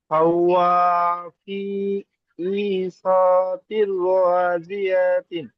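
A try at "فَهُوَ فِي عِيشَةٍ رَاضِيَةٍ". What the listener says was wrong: না, রাজিয়া তিন আর বললে হবে না, যখন মিলিয়ে পড়ছেন এই তা দুজেরটা কাটে যাবে, হায় সাকিন হবে। ফাহুয়া ফি ঈশাতির রাজিয়া। এই শাটা টান হয়ে যাচ্ছে, শিনটা টান হবে না। ঈশাতির রাজিয়া।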